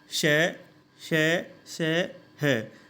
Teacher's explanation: जब हम इनका उच्चारण करते हैं श, श, श, ह, तो गर्म हवा मुख से बाहर निकलती है, इसलिए इनको ऊष्म व्यंजन कहा जाता है।